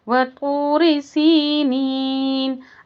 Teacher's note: آیت کمپلیٹ ہونے پر مد عارض للسکون ہوگا، 6 کاؤنٹ کر کے پڑھیں گے۔